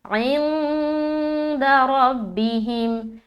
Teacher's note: نون ساکن کے بعد حرف دال آ رہا ہے تو یہاں پر ہم اخفا کریں گے یعنی کہ ناک میں نون کی آواز کو چھپائیں گے. اچھا، یہاں پر دیکھیے عین کو نا بالکل حلق سے نکالیں گے.